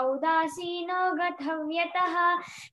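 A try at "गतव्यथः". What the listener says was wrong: అక్కడ ఉదాసీనో గత అంటున్నారు ఒత్తు థా లేదు అక్కడ గతవ్యథ ఉదాసీనో గతవ్యథః గథ అంటే అర్థం మారిపోతుంది గతవ్యథః సరేనా అదర్వైస్ వెరీ గుడ్ బాగా చెప్పినా చాలా బాగా చెప్పినా నెక్స్ట్ ఎవరు చెప్తారప్పా కార్తీక కార్తీక చెప్పి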